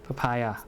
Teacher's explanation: the first p is unaspirated per and then pa is stress